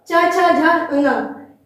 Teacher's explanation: तालु को टकरा करके निकलती है, तो इन्हें हम कहते हैं तालव्य स्पर्श व्यंजन